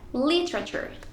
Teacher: La E es completamente ignorada y el sonido no se puede escuchar.